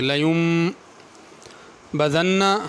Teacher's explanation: لیم میں نون نہیں پڑھا جائے گا بلکہ نون کے اوپر میم لکھی، میم پڑھی جائے گی، لیم بذن، اس نون پہ غنہ ہوگا۔